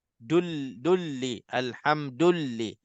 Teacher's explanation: Masalahnya dia tambahkan huruf lam tanpa sengaja seolah-olah lamli lam dari bawah ini adanya sabdu jadi bila dia